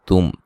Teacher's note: تا کو باریک میم ساکن کا اظہار ہے، غنہ نہیں کریں گے